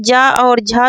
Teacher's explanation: तो जा और झा वाले व्यंजनों को क्या कहते हैं, तालव्य कहते हैं ना, तालु है ना, तालु से बोले जाते हैं